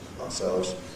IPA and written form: ɑːˈselvz (ourselves)